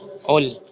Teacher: دال کو عین کے ساتھ جوائن کریں گے، عین کے اوپر شدہ سائن ہے